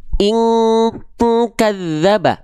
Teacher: Karena kalau ketemu sama kaf, dengungannya harus hilang. Ang, seperti ang.